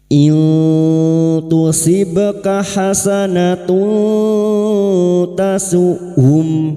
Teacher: Kita samarkan bunyi nun sukun dan mendengung selama tiga harakat. · Nun sukun bertemu ta ikhfa hakiki. Kita samarkan bunyi nun sukun dan mendengung selama 3 harokat. Nun sukun atau tanwin yang bertemu dengan salah satu dari 15 huruf ini termasuk huruf ta, maka bunyi nun sukun atau tanwin dibaca samar dan mendengung selama 3 harokat. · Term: Ikfa hakiki